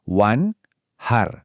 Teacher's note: bunyi n di wan sama huruf ha setelahnya, itu benar-benar terpisah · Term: izhar, idhar